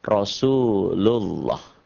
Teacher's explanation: Dibaca tebal berbunyi O, Allah, karena sebelumnya berbaris di atas atau dhammah.